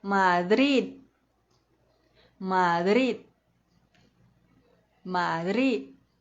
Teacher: É preciso que a língua repouse lá no céu da boca, iniciando o som da letra D. A gente não vai deixar ela cair e falar Madrid. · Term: D mudo